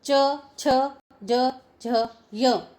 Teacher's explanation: हमारी जीवा जो है वो तालु का स्पर्श करती है इनके उच्चारण में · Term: च वर्ग